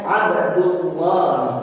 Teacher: Untuk tallahi ini dibaca tallahi karena lafzul jalalah atau lam jalalahnya didahului harakat fathah. Dan Abdullahi di sini dinamakan lam jalalah tafkhim karena lafaz lam jalalah didahului harkat dhamma